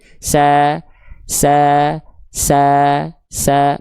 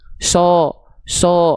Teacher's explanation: Huruf sin dia rileks lidahnya sehingga bunyinya sa sa. Sa sa berbeda sama huruf shad. Kalau huruf shad itu dia lidahnya dalamnya enggak rileks.